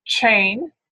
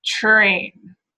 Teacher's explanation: Right, the other option is to produce it as, let's say, more of a cluster. So you get that ch type sound, but you still hear that R as well. There's a slight difference.